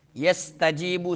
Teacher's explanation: سین میں سیٹی نکالیں گے